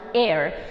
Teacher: It's not pronounced as hair, it's pronounced as air. Here H is silent.